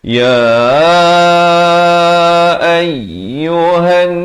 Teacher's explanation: bila masuk ha di atas nun itu didengungkan 2 harakat.